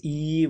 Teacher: जिन स्वरों का उच्चारण आप जीभ के आगे वाले भाग से करते हो और जीभ का आगे वाला भाग उठता है, ठीक है। जैसे ई बोलो तो आपका जीभ का आगे वाला भाग उठेगा, बड़ी ई। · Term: अग्रस्वर